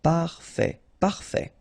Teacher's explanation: Parfait. Final T not pronounced.